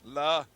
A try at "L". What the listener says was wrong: Not la. Just ul. How about laugh?